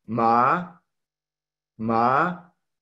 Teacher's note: con el tono ascendente o segundo tono